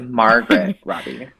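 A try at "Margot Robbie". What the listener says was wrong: Yes, but she doesn't pronounce the T. It's Margot. She gets really, really offended if you say Margaret. but seriously, it's Margot. Yeah, Margot Robbie. The T is silent.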